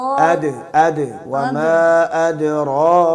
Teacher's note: हाविया हाविया वमा द अद वमा अदरा का हमजा को पहले ताकी से पढ़ना है। फिर उसके बाद दाल में कलकला करना है।